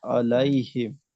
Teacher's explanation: लाम को अलैहिम लाम को मोटा भी नहीं करना।